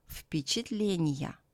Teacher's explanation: V becomes voiceless before the voiceless P.